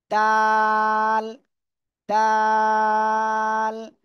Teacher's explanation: জিহ্বার আগা সামনের উপরে দুই দাঁতের গোড়ায় লাগান লাগিয়ে আপনারা এই অক্ষরটা উচ্চারণ করেন